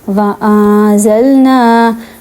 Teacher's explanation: یہاں پہ نون پہ اخفا ہو رہا ہے. کیوں؟ کیونکہ نون کے بعد زا ہے جو کہ حروف اخفا میں سے ہے، ٹھیک ہے. تو ہم نے نون کی آواز کو چھپانا ہے.